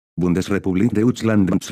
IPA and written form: ˈbʊndəsrepubliːk ˈdɔʏʧlant (Bundesrepublik Deutschland)